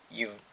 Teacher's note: கீழ் இதழும் மேல்வாய்ப்பல்லும் இணைவதால் பிறக்கும் எழுத்து